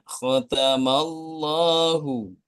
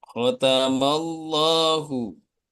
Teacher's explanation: Dibaca tafkhim atau tebal jika lafaz Allah didahului harokat fathah atau dhammah.